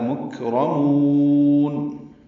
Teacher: کاف ساکن پہ ہمس ہے